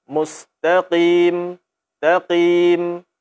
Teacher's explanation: Kurangi ketebalannya sedikit, mustaqim, taqim. Tetap kita keluarkan dia daripada pangkal lidah, mustaqim. Seperti itu.